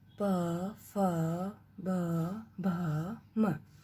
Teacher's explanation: प वर्ग प, फ, ब, भ, म। ये ओष्ठ मीन्स होठों से उच्चारित होने वाले वर्ण